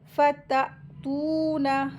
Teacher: ता के साथ वाव मद लगी है, इसको दो हरकत खींचेंगे। नून के ऊपर ज़बर है, इसको जल्दी पढ़ेंगे।